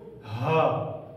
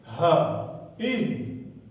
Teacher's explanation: जिस हा को, गोल हे को हम सीने से अदा करते हैं, उसकी आवाज को हा, ये पहली हा वही है।